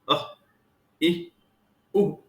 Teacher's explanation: अ वर्ण के साथ ह, ई वर्ण के साथ ही, उ वर्ण के साथ हु, ऐसा ही सुनाई देता है। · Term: विसर्ग